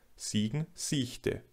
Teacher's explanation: im nördlicheren Teil Deutschlands das auslautende [k] häufig zum [ç] spirantisiert